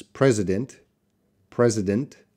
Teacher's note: president but we see the IPA that this can be deleted this can be a deleted schwa sound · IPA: /ˈprɛzɪd(ə)nt/